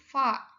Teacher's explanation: fa yaitu bunyi antara bibir dan gigi